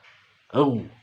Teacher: Nah, di sini juga jangan sampai au, tapi au ya. Tempatnya di tenggorokan yang paling atas dan juga tidak mendengkur.